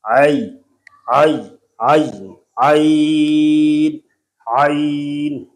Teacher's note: اس کے اندر درمیان میں جو یا آتی ہے وہ علمی اعتبار سے یا لین ہے، تو یا لین میں زبان کا جو درمیان ہوتا ہے یہ اوپر لگتا ہے لیکن نرمی سے